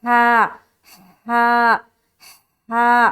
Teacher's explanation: तो यहाँ पर जब देखेंगे जीम अलिफ जबर जा, हा अलिफ जबर हा, देखिए हा है, इसको हलक से निकालेंगे और हलक से निकालते हुए हवा की सी आवाज आएगी